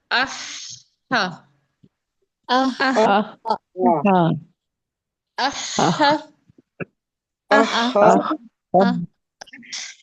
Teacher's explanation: ہم ہا کو تھوڑا ٹائم دیں گے. ہا میں سانس جاری ہوگا